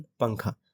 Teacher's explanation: نون کی آواز کو چھپانا ہے ناک میں، ٹھیک ہے، فار دا ڈیوریشن آف 2 حرکات، دیٹ از 1 سیکنڈ · نون کی آواز کو ناک میں چھپا کر پڑھیں گے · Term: اخفا